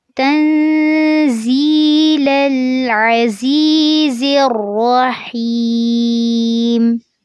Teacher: جب زا کو را سے ملائیں گے تو فوراً اس کو پر کرنا ہے